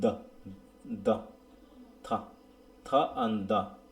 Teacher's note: sounds made with দ্য tongue touching দ্য front teeth are called dental